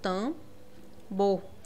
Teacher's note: Esse M, ele vai nasalizar a letra A